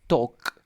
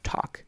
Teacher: We omit the L sound.